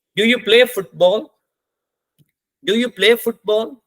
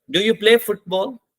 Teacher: हम क्वेश्चन पूछ रहे हैं राइजिंग टोन के साथ